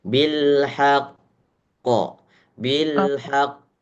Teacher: bilhaqnya akbar qalqalahnya sehingga ada jeda antara qof dan pantulannya. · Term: qalqalah akbar